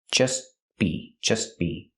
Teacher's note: We hear the T in just as a stop T between consonants, so you don't really hear it.